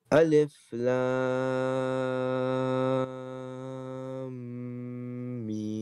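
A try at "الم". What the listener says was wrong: Good job.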